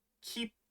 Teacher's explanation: sound and holding on to it for a little extra beat it's almost like you pause in the middle of the word